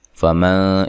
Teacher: فمن یہاں نون ساکن کا اخفا مع الغنہ ہے